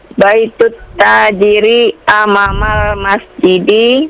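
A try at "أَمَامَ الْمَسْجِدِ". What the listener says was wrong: amamal mimnya agak panjang amamal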